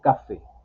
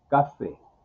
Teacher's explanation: se pronuncia como, en este caso, como una palabra grave, no como aguda. Café, no decimos café, café.